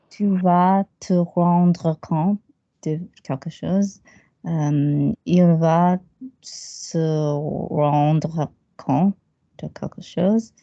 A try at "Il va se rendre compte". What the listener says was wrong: Smaller T, big vowels. Il va se rendre compte. Lovely.